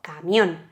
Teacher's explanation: tiene el golpe de voz camión en la O y en la N, que es la última sílaba, y como termina en vocal más N, podemos poner el acento, podemos poner la tilde.